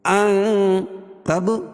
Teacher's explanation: یہاں ناک میں آواز کو چھپا کر پڑھیں گے۔ ان تب، با پر قلقلہ، با حروف قلقلہ کے 5 حرفوں میں سے ہے، جب بین پر جزم ہوگا تو وہاں قلقلہ ہوگا، چاہے رکنے کی صورت میں ہو یا ملانے کی صورت میں۔ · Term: اخفا حقیقی